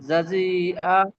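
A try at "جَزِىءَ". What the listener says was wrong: হ্যাঁ, টান দেয়, জাজি বলে টান ধরে থাকবেন না, স্পিডে বলবেন, জাজি আ।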